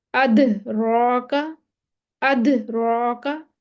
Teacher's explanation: साकिन है, लेकिन वक्फ नहीं कर रहे हैं, आवाज पलट कर वापस आएगी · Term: कलकला